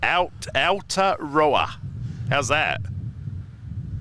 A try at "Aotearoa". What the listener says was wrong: Aotearoa, but you need to roll the R in row.